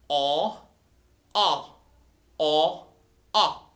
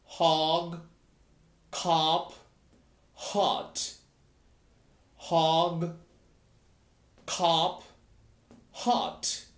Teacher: La mandíbula tiene que caer y la lengua va hacia atrás.